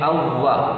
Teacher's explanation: اووا، واو ساکن پھر اس کے بعد واو متحرک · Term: مشدد